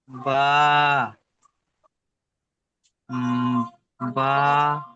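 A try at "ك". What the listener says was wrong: বা নই, বা ঠিক এমন আকৃতি থেকে আসে, এখানে উপরের দিকে একটু বেকার ডিজাইন রয়েছে, ঠিক এমন। কাফ।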